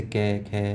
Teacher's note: हम कंपन मतलब वाइब्रेशन न करें। जैसे कै, खे तो वाइब्रेशन नहीं हो रहा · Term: अघोष